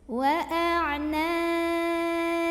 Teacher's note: Qalqalah yaitu bayang sukunya ini karena kita berhenti atau disukunkan Nya maka cara membacanya dipantulkan dengan pantulan yang besar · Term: qolqolah kubro